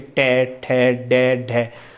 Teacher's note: मूर्धा में देखिए, मूर्धा, इन्हें टे, टे, टे, अगर इसे बोला जाता है, इसका उच्चारण किया जाता है, तो जीभ हमारे खुरदरे भाग से, दांत के पीछे, दांत के पिछले वाले भाग से जो खुरदरा है उससे लगती है टे, ठे, डे, ढे।